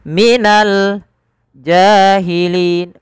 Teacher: Minal jahilin, ja dipanjangkan 2 harakat karena ia mad tabi'i, fathah bertemu dengan alif.